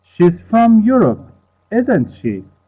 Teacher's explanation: i'm asking a real question because i used rising intonation